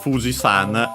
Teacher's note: Fuji-san is accented on the fu.